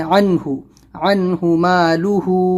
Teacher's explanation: نون ساکن کے بعد ہا ہے، حلقی لیٹر ہے تو اظہار کرنا ہے